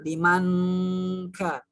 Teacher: Tapi karena kaf ini termasuk ke dalam huruf yang dimasukkan dengung itu kalau dibacanya murni dengan dengung itu yang keliru, bukan limang, bukan pakai ng ya, bukan pakai limang, tapi nunnya itu disamarkan ke huruf kaf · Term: Ikhfa